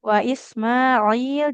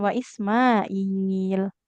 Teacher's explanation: huruf ainnya jangan jadi seperti Hamzah ya